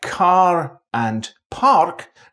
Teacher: in Scottish accents, words like car and park have an R sound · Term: rhotic